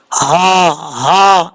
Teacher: خا حروف مصطلح میں سے پر پڑھا جائے گا، را کے اوپر زبر ہے، را پر پڑھا جائے گا، اور جیم کے بعد جو ہا ہے یہ بریک نہیں پڑھنا، یہ بھاری ساؤنڈ کے ساتھ پڑھا جائے گا۔ یہ جو ہا جہاں سے ادا ہوتا ہے جس حلق سے، اس حلق کا تعلق سینے کی طرف ہے، جب یہ سینے سے آواز نکلے گی تب یہ صحیح طریقے سے پڑھا جائے گا، ہا ہا، اس طریقے سے۔